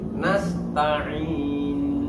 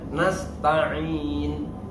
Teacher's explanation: nun tetap kita dengungkan, namun dengungnya singkat